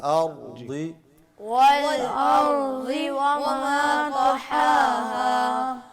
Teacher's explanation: والشمس وضحاها والقمر إذا تلاها والنهار إذا جلاها والليل إذا يغشاها والسماء وما بناها والأرض وما طحاها. را کو نہ ہلائیں، ارضی میں را کو ہلائیں مت